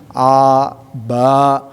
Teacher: ada jaharnya, ada syiddahnya, ada al-infitahnya, ada al-istifalnya menurun. Jadi sedikit-sedikit, oh jadi al-infitah harus menurun nih ke bawah gitu.